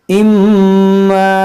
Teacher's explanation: मीम मुशद्दद है, इसमें गुन्ना करेंगे